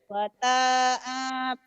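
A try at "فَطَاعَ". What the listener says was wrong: Fata'anya panjang. Fata'a bukan pato'a.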